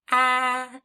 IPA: ă